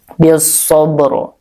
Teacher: Karena di sini diwaqaf sehingga ro-nya menjadi sukun ya, dan sebelumnya juga sukun. Nah, tapi sebelum sukun yang pertama ada harokat fathah yaitu di shad ya, sehingga ro-nya dibaca tebal atau tafkhim.